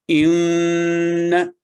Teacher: 2 second نون کی آواز غنہ اور 1 سیکنڈ فتح۔